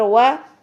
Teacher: वाओ को दोनों होंठों के गोलाई से अदा करना है। वाओ के लिए आपके अगर होंठ दांतों के साथ मिल रहे हैं तो ये गलत अदायगी होगी, गलत अदायगी हो जाएगी।